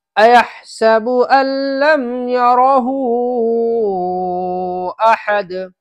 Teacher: یرہ کے ہاپ کے اوپر مد ہے، اس مد کو زیادہ کھینچیں